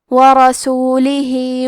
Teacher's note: یہاں مد صلہ صغرا ہے تو ہم اپنی آواز 2 مد کے برابر لمبی کریں گے. ورسولہ وتلک.